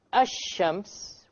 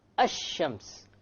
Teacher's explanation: Notice when I say ash-shams, which is the Arabic word for sun, where is the lam? Silent. Silent. It's not pronounced, right? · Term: solar letters